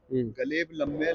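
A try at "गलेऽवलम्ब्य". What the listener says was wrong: गलेव, गलेव लंब, गलेव लंब्य, लंबे ना लंब्य, ल म ब य लंब्य।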